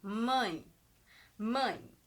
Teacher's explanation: a gente também tem um ditongo decrescente e ele é nasal porque por causa do Tiozinho aqui o som acaba saindo mais